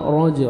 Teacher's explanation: را کو موٹا کر کے پڑھیں گے زبر ہے